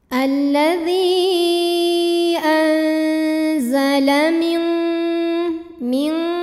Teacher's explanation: Cara membacanya, nunnya dibunyikan samar-samar, siap-siap menuju makhraj huruf zai disertai bunyi dengung. Samar dan dengungnya sama karena huruf zai ini makhrajnya tidak terlalu dekat, tidak terlalu jauh dari nun. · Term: ikhfa awsat